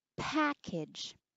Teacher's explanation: package to make it sound more P not be like package add more aspiration the H sound more air